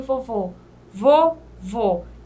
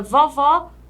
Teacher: com acento agudo abre mais a letra